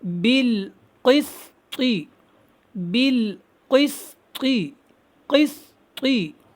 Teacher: سین باریک سختی کے ساتھ اور قاف کو موٹا پڑھیں